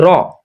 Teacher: জিবের আগার উল্টো পিঠ ওপর তালুর সঙ্গে লাগিয়ে দিলেই র কথাটি উচ্চারণ হয়। এই তো, ওপর তালু, জিবের আগাটা ওপর তালুর সঙ্গে লাগিয়ে উচ্চারিত হয় র।